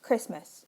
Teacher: The New Zealand English word for Christmas has two syllables, both with codas, pronounced Christmas.